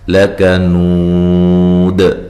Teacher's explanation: نو واو مدہ ہے تو وقف کی صورت میں مد کے ساتھ وقف کر سکتے ہیں، ٹھیک ہے، لمبا کر کے. اور دال پہ قلقلہ کریں گے، وقف کی صورت میں قلقلہ کو واضح کریں گے